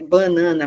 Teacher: a palavra banana, por exemplo, em muitas regiões brasileiras, ela consegue ter duas sílabas nasais